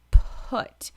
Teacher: I want you to feel the P. Huh. Round those lips, give me that air, and then say the rest of the words.